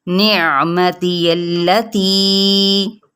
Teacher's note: नून की ज़ेर को बारीक करते हुए आइन के साथ मिलाना है